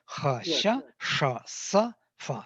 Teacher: I think all 5 fricatives are there, voiceless, but there are no voiced fricatives.